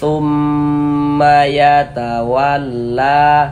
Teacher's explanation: Thumnya yang kita panjangkan, ma-nya pendek, jangan perlu dibaca thumma, ma-nya pendek. Thumnya yang kita tahan, kita gunnahkan.